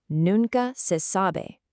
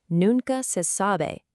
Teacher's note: Notice the two peaks. We've got noon at the beginning and sa near the end. Also, definitely pay attention to how sabe ends in the phonetic spelling.